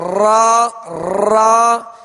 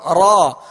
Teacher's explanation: جب را کو ادا کریں تو زبان اس کے جب مخرج میں لگے تو ہلکی سی کپ کپاہٹ ہو